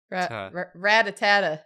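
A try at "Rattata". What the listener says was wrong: It's ratatata. It's ratata. Ratata. You're adding an extra at.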